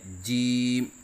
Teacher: زبان کا بیچ جب اوپر تالو کے درمیان سے لگے تو اس سے جیم ادا ہوتا ہے، جیسے کہ آپ کو اس نقشے میں نظر آ رہا ہے کہ زبان کا بیچ اوپر کے تالو سے لگا ہوا ہے۔